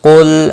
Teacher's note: قاف مستعلیہ ہے، پر پڑھا جائے گا، لام ساکن کو ہلانا نہیں۔